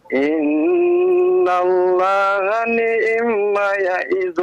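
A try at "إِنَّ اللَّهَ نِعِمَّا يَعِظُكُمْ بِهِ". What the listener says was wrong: Nah, tasydidnya kurang, Pak. Tasydidnya mim gunnah musyaddah. Innallaha ni'ma. Ni'ma ya'idhukum bih. Maknya panjang 2 harokat. Maknya panjang. Ni'ma. Nah, panjang 2 harokat.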